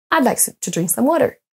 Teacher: on va accentuer sur les mots like drink et water tous les autres vont être à peine entendus